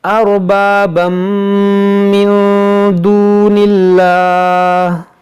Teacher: یہاں پر دیکھیں تنوین کے بعد میم ہے تو یہاں پر ادغام کریں گے